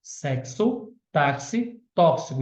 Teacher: o X tem um som de KS